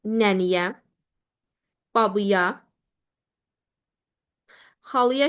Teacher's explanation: Bu sözləri yönlü hal üzrə dəyişdiyimiz zaman nənəyə, babaya, xalaya şəklində dəyişir. Bu sözlərdə sözün sonundakı açıq saitlərimiz tələffüz zamanı qapalı saitə keçir. Nənəyə sözü nəniyə, babıya, xalıya şəklində tələffüz olunmuş olur.